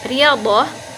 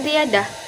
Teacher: Bunyi do akan direalisasikan dengan bunyi D. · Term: interferensi